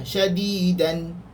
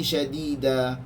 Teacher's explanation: Dia akan jadi syadida, nun tu akan hilang. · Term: waqaf